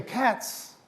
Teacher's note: when you say cats the pluralizing sound is like that no vocalizing no no vibration of the vocal cords